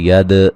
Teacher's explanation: दाल पे कलकला है, हिला के पढ़ेंगे